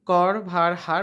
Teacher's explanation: যে ধ্বনি উচ্চারণের সময় জীব একাধিকবার অতি দ্রুত দন্তমূলকে আঘাত করে বায়ুপথে বাধা সৃষ্টি করে তাকে কম্পিত ব্যঞ্জন বলে